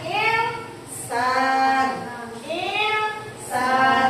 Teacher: membaca dengan samar antara nun sukun dan huruf yang mengikutinya. Ini ada nun sukun bertemu dengan huruf sin, ya. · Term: ikhfa